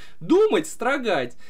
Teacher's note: Думать на у падает ударение, а строгать на а.